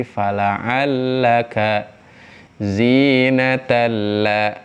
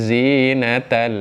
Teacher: saat ada tanwin bertemu dengan lam kita sejatinya melafalkan huruf lam ketika dia bertasdid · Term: idgham bila gunah